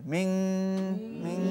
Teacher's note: গুণার কারণে টান হবে